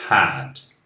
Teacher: O passado de have, eu pronuncio had. Não é um som de E, simplesmente. É um som de A junto com o som de E, lá no fundo da garganta.